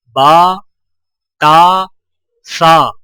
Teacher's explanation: بڑے زبر کو ہونٹوں کو اوپر کی طرف کھول کر بغیر کھینچے اور جھٹکا دیے پڑھا جاتا ہے